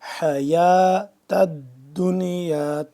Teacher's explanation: حا کو حلق کے درمیانی حصے سے